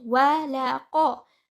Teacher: qaf is a heavy letter. You read the qaf with tafkhim and it will be also one count.